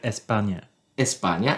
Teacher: any spanish speaker is going to add an e in the beginning of any s word